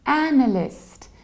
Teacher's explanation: So we stress the very first syllable and we have a very broad a, analyst. In the American accent, it's a little bit wider, analyst, analyst.